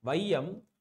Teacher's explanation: ஐகாரம் சொல்லில் முதலில் வரும்பொழுது ஒன்றரை மாத்திரை அளவில் ஒழிக்கிறது. அப்போ முதல்ல வரப்ப நம்மளுக்கு என்ன ஆகுது அப்படின்னு சொல்லிட்டு பான்னா ரெண்டு மாத்திரையில இருந்து அரை மாத்திரை குறைந்து ஒன்ரை மாத்திரையில் ஒழிக்குது. · சொல்லோட முதல் இடை இறுதியில வரும்போது தனக்குரிய இரண்டு மாத்திரை அளவில இருந்து என்னது குறைந்து ஒளிக்கிறது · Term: ஐகார குறுக்கம்